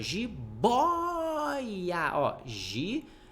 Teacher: A paroxítona, eu vou te lembrar que a sílaba tônica não é a última, é a penúltima. Se fosse jiboiar, seria uma oxítona, mas ela não é oxítona.